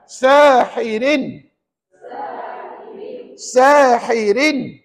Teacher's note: Bukankah ra tu baris dua di bawah maka layak disebut ra nipis